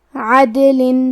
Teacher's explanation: کلمت عدل میں حرف دال پہ جزم ہے تو ہمیں دال کو قلقلہ سے پڑھنا ہے. قلقلہ کا معنی ہے حرف ساکن کو ہلانا تو ہم حرف دال کو ہلاتے ہوئے یہ کلمہ کو پڑھیں گے